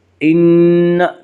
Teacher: نون مشدد غنہ ہوگا، غنہ کی مقدار 1 الف ہے